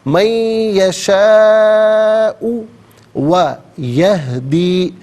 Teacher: مد منفصل ہے، مد جائز بھی کہتے ہیں، اور اس کو منیمم 3 الف کی مقدار کھینچ کر پڑھنا چاہیے، اور زیادہ سے زیادہ اس کو 5 الف کی مقدار کھینچ کر پڑھا جا سکتا ہے.